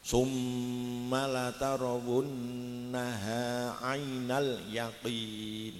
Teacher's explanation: Dengung ini lamanya 2 harokat.